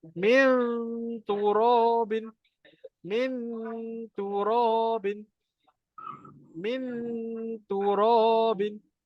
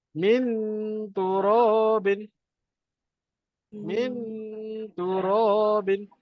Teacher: Jadi kalau huruf ta, makhrajnya dekat gigi, maknanya kita kena dengung pun dekat situ lah. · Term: dengung sama